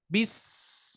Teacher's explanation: sin dia mempunyai sifat rhwah ya rhwah itu adalah mengalirnya suara